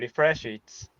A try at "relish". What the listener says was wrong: Careful, relish it. Relish. sounded said like you said refresh it. be careful.